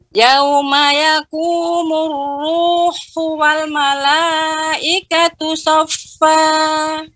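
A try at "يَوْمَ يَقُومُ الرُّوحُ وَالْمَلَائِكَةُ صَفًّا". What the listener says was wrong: Ya, tadi ketika membaca walnya agak nyangkut atau apa namanya yang gantung ya. Jadi wa-nya juga dibaca jelas. Yauma yaqumur ruhu wal mala.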